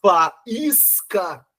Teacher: O I é mais forte que o A que está antes. Por isso que o I está acentuado. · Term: hiato